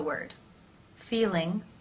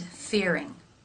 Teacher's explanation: the lips are more rounded for the r sound and the tongue tip for the L is as expected raised